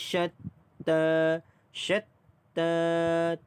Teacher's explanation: ta tu 2 harakat kerana mad asli huruf alif